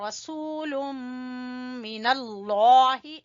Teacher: ادغام ہے، غنہ کریں گے، ادغام بالغنہ ہے، رسول من اللہ، لفظ اللہ کو موٹا پڑھیں گے کیونکہ لفظ اللہ سے پہلے زبر ہے اور ہا کے نیچے زیر ہے تو ہا کو چھوٹا پڑھیں · اور سین کو کھینچیں گے واو مدہ کی وجہ سے، اور یہاں پر ادغام ہے، غنہ کریں گے، ادغام بالغنہ ہے